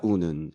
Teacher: 우는에서는 리을이 탈락됐죠